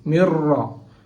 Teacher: The ra harf came after the nun sakin and here hukum is idgham bila ghunna. Okay. We have to idgham it without ghunnat.